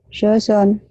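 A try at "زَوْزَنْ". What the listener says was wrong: Jangan soson. Jangan son. Zo, zo, da, da. Jangan dibunyikan. Zozon. Zozon. Jangan ada so, zo. Z-H-O, tapi jangan O, jangan monyong ya.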